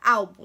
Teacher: E na palavra álbum, né, que a sílaba tônica é al